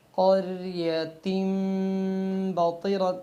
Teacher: اب تنوین اور با کے درمیان آپ نے میم کی آواز کو پیدا کرنا ہے